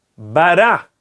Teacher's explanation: A sílaba tônica é o ra. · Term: oxítona